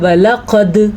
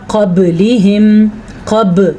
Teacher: جب ان کے اوپر ساکن آ جائے یعنی کہ جزم آ جائے تو وہاں پہ جھٹکا پیدا ہوتا ہے، اس جھٹکے کو قلقلہ کہتے ہیں۔